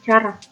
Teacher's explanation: C dengan bunyi hambat laminopalatal tak bersuara